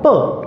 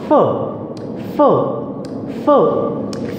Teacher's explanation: you touch both of the lips and here you touch one lip and upper teeth lower lip and upper teeth sound okay another example flower sometimes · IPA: /f/